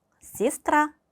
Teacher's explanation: 알파벳 예와 야는 강세가 없을 경우 이로 발음이 됩니다